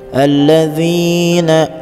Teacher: alladzi itu masih mad tabi'i, ada huruf iya sebelumnya berharakat kasrah dibaca panjang 2 harakat